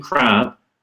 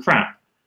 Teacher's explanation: When I'm saying crab, that's a significantly longer version of the same vowel as in crap. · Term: length